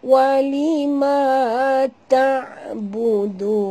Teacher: Mim mati bertemu waw. Tak boleh dengung.